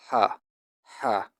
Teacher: The base of the tongue is pushed against the back of the upper throat to make the passage narrower.